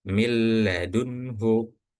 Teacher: Bila tanpa ghunah dengung. Jadi tanpa dengung dibacanya millunhu